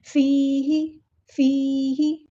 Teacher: ہاں کو لمبا نہیں کرنا، حرکات کو لمبا نہیں کرتے